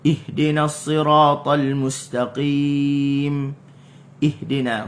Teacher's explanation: Huruf ha ni dia adalah huruf yang bersifat dengan khafa, huruf yang sembunyi, huruf yang lemah.